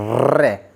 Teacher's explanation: रे का उच्चारण करते समय हमारी जीभ मध्य में, मुख के मध्य में आ जाती है, पूरी जीभ मुख के मध्य में, और झटके से आगे पीछे होती है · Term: प्रकंपित व्यंजन